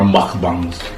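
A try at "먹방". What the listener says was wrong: You don't need to say it like that. Why are you saying it like in your throat? It's like you're saying mukbang. It's not mukh.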